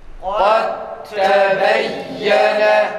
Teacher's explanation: Dal harfini dedik ta'ya çeviriyoruz. Sonra ta'yı diğer ta'da idgam ediyoruz. Yani birinci ta'yı ikinci ta'ya katıyoruz. · Cezimli dal harfinden sonra ta harfi geldi mi dalı ta harfine çevirerek okuyoruz.